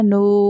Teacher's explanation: نون واؤ دمہ نو، یہاں پر واو مدہ ہو رہا ہے اس لیے ہم اس کو کھینچ کر پڑھیں گے اپ ٹو 1 الف